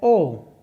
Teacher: ओ के लिए हमारा सूत्र था ओ दौतो कंठ तालु ओ दौतो कंठोष्टम, ओ दौतो कंठोष्टम। तो ओ का उच्चारण स्थान हो जाएगा कंठोष्ट